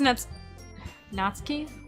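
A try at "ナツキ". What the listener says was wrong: Natsuki? I don't think you pronounce the U, really. I think.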